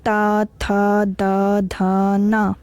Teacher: जब हम ता बोलते हैं तो जो हमारी जीभ है वो हमारे दांतों की जड़ों के पास जाके टच होती है, फिर ये वाली साउंड क्रिएट होती है। ता, था, दा, धा, ना, पांचों शब्द जो है वो हम लोग दांत के सहारे से बोलते हैं, इसलिए इसको बोलते हैं दंत व्यंजन।